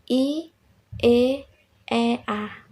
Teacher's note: vokal yang dihasilkan oleh gerak naik turunnya lidah bagian depan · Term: Vokal depan